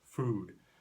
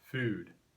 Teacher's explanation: Older speakers in California often pronounce the vowel oo far back in their mouth, food, but younger speakers typically pronounce it further forward in the mouth, food. No one is necessarily conscious of this, but they listen for it as a signal of identity with a younger or an older generation.